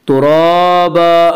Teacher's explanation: ترابا، الف مدہ، الف میں شاہ مدہ ہوتا ہے، الف سے پہلے زبر ہوتا ہے، الف مدہ کو ایک الف کے برابر کھینچ کر پڑھیں گے۔ آگے آیت ہے وقف کریں گے، ترابا، دو زبر پر وقف کرنا تو ایک زبر کے ساتھ الف پڑھا جاتا ہے۔